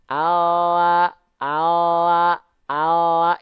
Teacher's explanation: ini l yang nempel ujung lidahnya doang